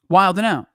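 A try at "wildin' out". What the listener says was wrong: No, wilding out. You don't say the D.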